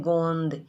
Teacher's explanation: इसमें ओ जो है ये अनुनासिक स्वर है, क्योंकि अपन गोंद उच्चारण करते हैं गोंद, तो जो श्वास वायु मुंह से और नाक दोनों से निकलती है, लेकिन फिर भी यहाँ चंद्र बिंदु का इस्तेमाल नहीं होता।